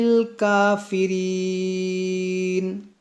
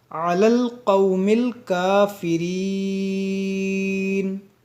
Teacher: کیونکہ یہاں پر دیکھیں وقف ہے، آیت مکمل ہو رہی ہے یہاں پہ، تو اس نون کو زبر کو ساکن کر دیں گے، اور جب ساکن کریں گے تو آپ غور کریں کہ یہاں یا مدہ ہے، یا ساکن سے پہلے زیر ہے، یا مدہ ہے، اور یا مدہ کے بعد یہاں پر سکون عارضی آ رہا ہے رکنے کی وجہ سے، تو یہاں مد عارض کا قاعدہ لگے گا، کھینچ کر رکیں گے تھوڑا سا۔